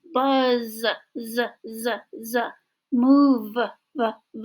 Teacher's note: You should be able to feel in your vocal cords there is a vibration.